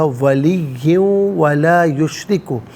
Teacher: ملا کر پڑھنے کی صورت میں ولی ولا یشرک پڑھیں گے، اور اس صورت میں دو زیر کی تنوین ہے، اس کو واو کے ساتھ ملا کر واو کی آواز کو ادا کیا جائے گا۔ یرملون کا قاعدہ یہاں پر اپلائی ہوگا، ولی ولا یشرک۔